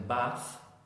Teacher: your tongue comes out half a centimeter between your teeth and you blow air with no vibration